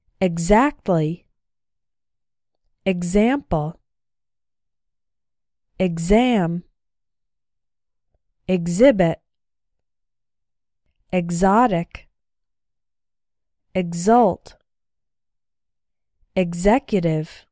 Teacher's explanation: the other way to pronounce X is like G Z